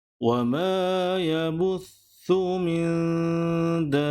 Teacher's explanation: Kalimah dabbah perlu dibaca dengan kadar 6 harakat sebab selepas tanda mad terdapat huruf yang ada tanda sabdu ataupun dalam bahasa Arab disebut sebagai syiddah.